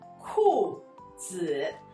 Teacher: 裤 is the fourth tone. And the 子 is not one of the four tones, but the one that sounds like schwa.